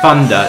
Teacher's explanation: in London it's very common not to say the th sound so you say thunder not thunder and it's very common in